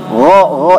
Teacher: kalau gha jahar, kita coba di punggung tangan kita gha tidak ada udara yang keluar. Tapi pada dasarnya makhraj kha dengan gha itu sama.